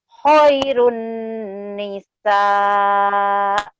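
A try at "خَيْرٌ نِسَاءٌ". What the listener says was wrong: Khairun nisa. Kha-nya kurang ngorok.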